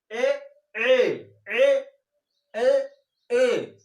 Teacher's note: कंठ के द्वारा आवाज निकल रही है, तलुए का स्पर्श जीवा कर रही है, उसको हम कंठ तालव्य स्वर कहते हैं।